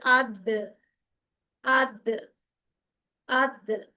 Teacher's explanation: दाल भी उन हरूफ में से है जिसके ऊपर कलकला होगा, यानी साउंड जो है वो जैसे किसी चीज से ऐसे टकरा के वापस आती है